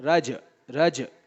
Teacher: تو یہ جیم ساکن ہے. تو جب جیم ساکن ہو تو اس کی آواز کو شیک کرتے ہیں، شیک، آواز کو ہلاتے ہیں